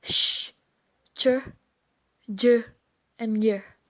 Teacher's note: The tongue touches or almost touches the hard palate when we say the sound sh, ch, j, and y.